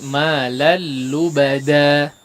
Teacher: malal lubada, dua harakat saja, ya. Lubada, da, jangan terlalu panjang.